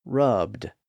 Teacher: since rub ends in a voiced B sound the past tense suffix ends with a voiced D sound